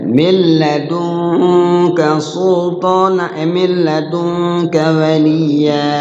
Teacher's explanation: Cara bacanya di lamnya itu di huruf idghamnya jangan lama-lama. Enggak boleh lama-lama. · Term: Idgham bila gunnah